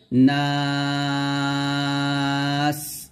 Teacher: নাতে আমরা তিন টান দিব আবার নাস এরকম লাস্টে বাতাসও বের করব